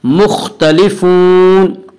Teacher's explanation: خا کو پر پڑھیں گے۔ خا حروف مستعلیہ میں سے ہے۔